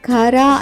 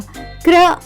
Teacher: కాబట్టి సిఆర్ఏబి పదం ఉచ్చరించేటప్పుడు సిఆర్ యొక్క ఉచ్చారణ మనం కర అని కాకుండా క్ర అని తీసుకుంటాం